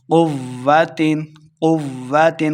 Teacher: مدد اور قاد لمحہ کریں گے، قوت قوت واو مشدد ہے، قاف کو واو کے ساتھ ملانا ہے اور قاف کو موٹا بھی پڑھنا ہے